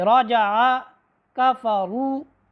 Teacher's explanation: اچھا، حرف را کا ایک یہ بھی قاعدہ آپ نے یاد رکھنا ہے کہ اس کے اوپر جب زبر اور پیش آئے گی تو حرف را موٹی پڑھی جائے گی